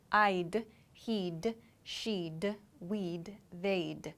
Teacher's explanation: So we reduce the would sound to D. So this means I'd, he'd, she'd, we'd, they'd. So it's a D sound, a very quick D sound.